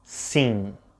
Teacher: while the word sim ends with an M, you don't actually pronounce it. It's more like a smiley vowel, sim. Your lips never touch.